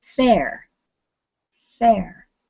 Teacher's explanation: notice that you don't get any buzzing in your throat until you say the r at the end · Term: unvoiced